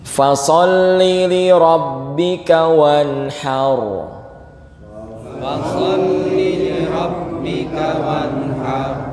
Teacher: ada nun sukun ketemu ha. Jangan didengungkan nian ya.